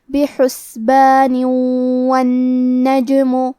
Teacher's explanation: اگر ہم یہ کلمہ کو اگلی آیت کے ساتھ ملا کے پڑھے تو حرف الواو کلمت والنجم دوسری والی آیت میں حروف الادغام بغنہ میں سے ہے اور ادغام کا معنی ہے حرف کو حرف میں داخل کرنا تو ہم یہ تنوین کو واو میں ملا کے غنہ اور تشدید کے ساتھ یہ حکم کو ادا کریں گے